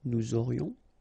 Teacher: final S not pronounced, and then you get this liaison